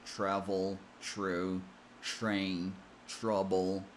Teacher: Another interesting sound happens when the letter T is followed by an R sound. The T changes and becomes an almost CH sound. To create this sound correctly, say ch as in chair, chuck, chain, but just make sure the tip of the tongue is a bit more tense when it touches the gum ridge and focus on creating a stop of air.